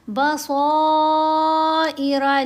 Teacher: صاد کو موٹا بھی پڑھیں گے، صاد کے اوپر یہ جو مد ہے یہ مد متصل ہے، 5 حرکات کے برابر اس کو لمبا بھی کیا جائے گا